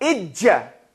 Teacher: the middle of the tongue touches the roof of the mouth and as it pulls away the sound comes